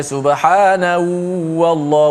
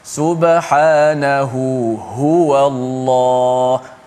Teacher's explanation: dia akan slow intonasi pertama ha, dan dia akan kuatkan intonasi ha yang kedua